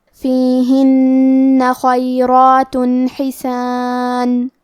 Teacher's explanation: فیہما فاکہۃ ونخل ورمان فبأي آلاء ربكما تكذبان فيهن خيرات حسان، کلمت فیہن میں حرف نون کی تشدید کو ظاہر کریں گے اور اسے دو حرف کے برابر پڑھیں گے۔